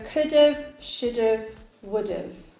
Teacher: Another verb that's often reduced is have to just the v sound. So could've, should've, would've.